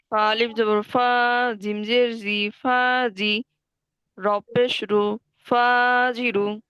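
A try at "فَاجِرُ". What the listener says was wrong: মাশাল্লাহ সুন্দর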